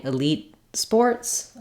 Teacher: end depends on what follows so if I'm saying Elite Sports I would use an unreleased T Elite Sports because the next word starts with a consonant sound